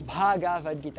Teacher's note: nós temos também o B, aspirado